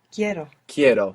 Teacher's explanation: So we stress down on that E and it splits into IE.